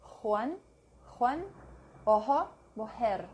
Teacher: J is the English H. Juan. It can also be given a slightly guttural sound.